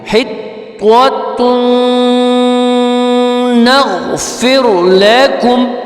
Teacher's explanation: تن کے بعد نون پہ جو ہے وہ تشدید آ گئی ہے، اس کو ملا کے پڑھیں گے